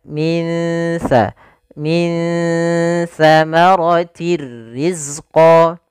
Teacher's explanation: samarkan nunnya kepada makhraj daripada huruf sa. Makhraj sa adalah ujung lidah menempel dengan gigi sari kita. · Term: ikhfa